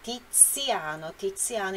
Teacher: O Z tem som explosivo.